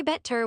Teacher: You say bet-ter with a clear T, pret-ty with a firm stop in the middle · In most accents and in perfectly correct standard English, the T in the middle of these words is clean and crisp.